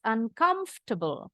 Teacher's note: karena r-nya enggak pernah bunyi